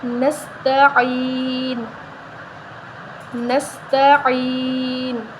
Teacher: عین نستعین کر دیتے ہیں زیادہ تر، ٹھیک ہے، نستعین نہیں کرنا، نستعین کرنا ہے۔ عین کے آگے یا مدہ ہے تو اس کو ایک الف کے برابر لمبا کریں گے، نون وقف کی صورت میں ساکن ہو جائے گا، ایسے پڑھیں گے، نستعین، نستعین، ٹھیک ہے۔